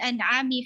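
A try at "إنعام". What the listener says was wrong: In'am. Ini in'am, kalau an'am. in'am. Jadi ya in'am.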